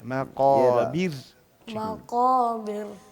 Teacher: را ساکین وقف کی حالت، را ساکین ماقبل زیر و را کو وقف کی حالت میں بریک پڑھتے ہیں. را ساکین ماقبل زیر ہو تو پھر بھی را کو بریک پڑھتے ہیں وقف کی حالت میں